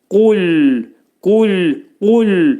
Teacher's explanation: qaf hərfinin məxrəci demək dilin sonu və dilçəyin başlanğıcındadır.